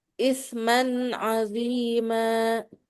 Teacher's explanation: izhar dia nggak boleh dengung